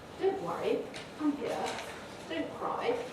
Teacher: using a low rise can sometimes defuse that it can be very soothing it can be reassuring